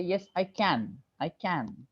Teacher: when you only say I can there can is stressed there this the only verb we have so we actually stress